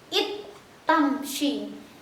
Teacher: Memasukkan huruf pertama ke huruf kedua sehingga seperti satu huruf yang bertasydid. Karena seperti satu huruf, dalnya ini sudah lebur ke ta, sudah masuk ya. Seperti satu huruf yang bertasydid. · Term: idgham